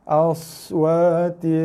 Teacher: jaga sad mati, ada bunyi desidan sikit.